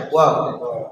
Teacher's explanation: ফা হইল সামনের দুই দাঁতের আগা নিচের ঠোঁটের পেটের সাথে লাগাইয়া ফা, আর ওয়াও দুই ঠোঁট গুল করিয়া মধ্যখান ফাঁক রাখিয়া ওয়াও